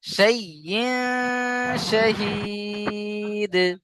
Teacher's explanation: তানবিনকে একালি পরিমাণ নাকে তুলে গণনা করে পড়তে হবে।